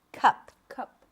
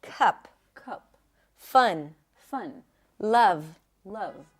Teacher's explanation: a cup sound is like a schwa sound but it's always stressed therefore it's going to be a little higher in pitch and a little longer